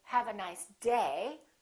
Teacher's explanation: I'm still going to emphasize the word day, but I'm not going to make my pitch go up.